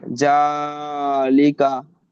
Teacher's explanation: জবরকে এক আলিফ পরিমাণ টান দিয়ে পড়তে হবে। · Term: খাড়া জবর